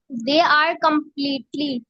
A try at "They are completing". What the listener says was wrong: No, ली कहाँ है? They are completing, TING, ting. They are completing.